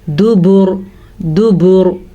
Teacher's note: साकिन रॉ से पहले पेश आई है तो रॉ पूर पड़ी जाएगी। अगर हम यहाँ वक्फ ना करें तो भी रॉ पूर पड़ी जाएगी, क्योंकि रॉ के ऊपर ज़बर है।